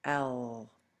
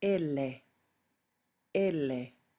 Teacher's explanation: Now with the Spanish L, you're going to use just the tip of your tongue. And instead of putting it behind your front teeth, I want you to feel up above your front teeth, still in back, and you'll feel the gum ridge above your front teeth, and you should say L.